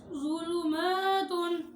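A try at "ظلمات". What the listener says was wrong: ये ज़ा पे सीटी ना निकालो ज़ू का ना ज़ुलु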